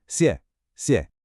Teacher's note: A sharp fourth tone followed by a light neutral tone.